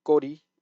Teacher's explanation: Gori, which needs to be a tense consonant and not just Kori